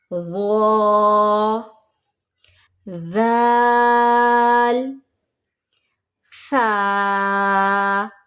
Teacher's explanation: नरम हरूफ बेसिकली हम ज़बान को दांतों के दरमियान हल्का सा टच करेंगे। अपनी ज़बान को हम नीचे वाले और ऊपर वाले दांतों के दरमियान हल्का सा टच करके फिर हम अदा करेंगे ताकि वो नरमी से अदा हो जाए।